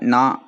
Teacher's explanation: நாக்கோட நுனிப்பகுதி வந்து வந்து மேல் அன்னத்தோட முதல் பகுதியை டச் பண்ணும்போது ரெண்டு சுழி நா பிறக்குது